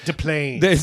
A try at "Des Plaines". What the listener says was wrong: No, it's with an S. It's Des Plaines.